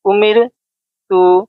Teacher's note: تو، امر تو، امر تو، او اس کو کھینچیں گے نہیں، او کو ہم نے کھینچ دیا تو مجہول ہو جائے گا